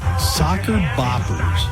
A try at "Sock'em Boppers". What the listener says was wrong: It's sock'em. It's not soccer. It's You need to add an EM